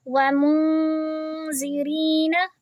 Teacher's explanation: نون کی آواز کو چھپائیں گے اور 2 حرکہ لمبی کریں گے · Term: اخفا